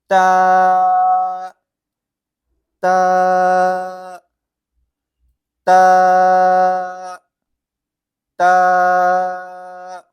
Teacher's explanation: تو تا کا مخرج آپ ایسا سمجھ لیجئے جیسے کہ ہماری جو زبان ہے، وہ زبان کی نوک کو ہمیں اوپر کے دانتوں کی جڑ کی طرف لگانا ہے، پھر جا کے یہ حرف جو ہے وہ تا نکلتا ہے